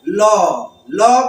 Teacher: ल बोलेंगे, जीभ थोड़ा सा कर्व हुई, उसके किनारे से वायु निकली, इसलिए इसको लुंठित, जो लुढ़ जा रहा है उसको लुंठित बोला जा रहा है। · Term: पार्श्व व्यंजन